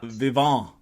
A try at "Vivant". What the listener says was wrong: probably don't pronounce the T. It's probably Vivant.